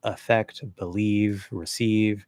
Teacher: But usually when we have an e, the e vowel, the long e in an unstressed syllable, it almost always gets reduced